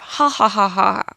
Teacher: you'll find nasality in post laughter